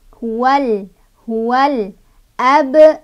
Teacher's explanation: Sebabnya karena ada alif lam bertemu dengan huruf qamariyah yaitu alif. Jadi cara bacanya lamnya dibaca jelas, nggak boleh mantul ya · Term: alif lam qamariyah